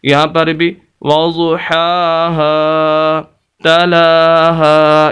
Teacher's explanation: ہا کے آگے الف، اور یہ بھی الف مدہ ہے، اس وجہ سے ہا کو لمبا کر رہے ہیں